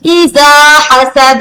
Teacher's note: हसद के दाल पे क्या होगा? कलकला होगा, थोड़ा सा इसको जंबश देकर हिलाकर पढ़ा जाएगा।